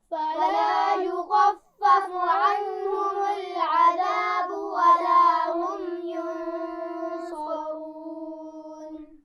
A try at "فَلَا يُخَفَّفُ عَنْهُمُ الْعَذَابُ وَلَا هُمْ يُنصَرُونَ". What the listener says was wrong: عنہم میں نون پر غنہ نہیں ہے، توجہ سے پڑھیے.